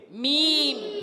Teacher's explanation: मीम की अदायगी होती है दोनों होठों के खुश्क हिस्से से मीम अदा होता है